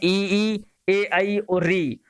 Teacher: जिन स्वरों के उच्चारण में जीवा के आगे का भाग सक्रिय रहता है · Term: अग्र स्वर